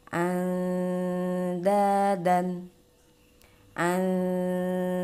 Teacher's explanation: Nah, ketika nun sukun atau tanwin bertemu dengan huruf dal, ini termasuk ke dalam ikhfa aqrab. Nah, perbedaan ikhfa aqrab yaitu pengucapan huruf nunnya yaitu lebih jelas daripada ikhfa awsat atau ikhfa ab'ad